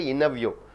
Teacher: Third one, at the interview, you don't say interview, you say interview. After NT comes, T is silent.